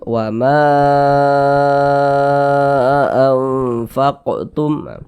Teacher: Nah, maka mad tabi'i yang berjumpa dengan huruf hamzah di lain kata, maka menjadi mad jaiz munfasil. Panjangnya itu 4 sampai 5 harokat. Jadi boleh 4 harokat, boleh juga 5 harokat panjangnya.